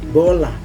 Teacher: diucapkannya dengan menutup kedua bibir lalu dibuka sehingga menjadi bola atau bebek.